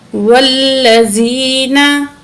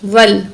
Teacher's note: वाव को लाम के साथ मिलाएंगे, दरमियान में अलिफ को नहीं पढ़ेंगे